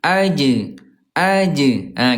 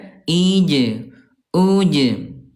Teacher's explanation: huruf jim ketika lagi sukun dia syiddah dia kuat ya dan juga qalqalah mantul.